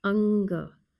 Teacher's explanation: No aspiration in this particular letter. The A sound is closed mouth. It has a slight nasal sound